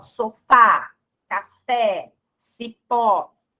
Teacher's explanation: O que o acento agudo traz, né, como efeito sonoro para vogal? Então, ele abre o som da vogal